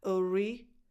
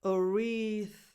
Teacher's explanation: So you start with a schwa, so a neutral position, a neutral vowel sound. Re with a tense E, as in the word eat.